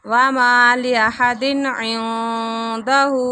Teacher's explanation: نون ساکن کے بعد آگے دال آ رہا ہے تو اخفا ہو رہا ہے